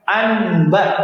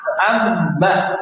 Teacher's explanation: Cara bacanya ya, nunnya diganti menjadi mim. · Diganti nunnya menjadi mim, jadi amba, coba. Nah, karena diganti dengan mim, maka cara membacanya pun sama dengan mim, dirapatkan dua bibirnya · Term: iqlab